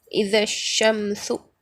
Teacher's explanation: دال سے ڈائریکٹ شین کو ملا کر پڑھیں گے، الف اور لام کو نہیں پڑھیں گے، کیونکہ الف اور لام کے بعد حروف شمسی میں سے شین آ رہا ہے یہاں پر۔